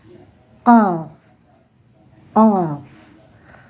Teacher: Yang kelima itu pangkal lidah. Lidah agak naik dan menyentuh langit-langit lunak. Makhraj yang kelima, yaitu huruf qaf.